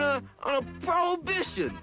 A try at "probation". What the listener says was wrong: It's not prohibition, it's probation.